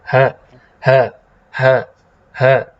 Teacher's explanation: pita suara kita itu terbuka tapi sebagian.